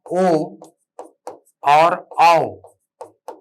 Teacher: ओ और आओ, ये दोनों कंठोष्ठ ध्वनि है, कंठोष्ठ ध्वनि।